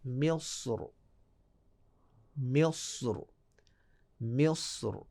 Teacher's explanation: افضل یہ ہے کہ آپ اس کو تفخیم کے ساتھ پڑھیں، موٹا پڑھیں